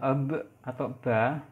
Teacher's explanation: bibir bawah bertemu dengan bibir atas, atau artikulatornya bibir bawah, tempat artikulasinya bibir atas. Kemudian cara artikulasinya dia stop. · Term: Bilabial stop